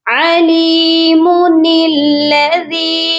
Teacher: میم کی پیش کو بھی پڑھیں گے اور نون کو لام کے ساتھ ملا کر پڑھا جائے گا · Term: نون قطنی